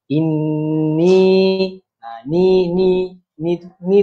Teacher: itu wajibunah inni huruf nun sebutan pada huruf nun itu dengung tu panjang ah dengung dia dua harakat